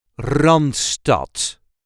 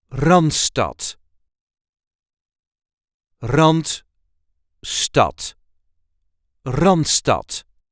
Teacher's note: There is a light emphasis on the first syllable.